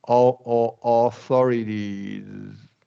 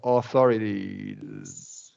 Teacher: hold the Z sound for a little bit, and then just stop using your voice